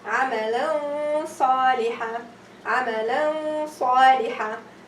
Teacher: The back of my tongue, little bit, you go up to the roof, a little bit to make the ghunna fat.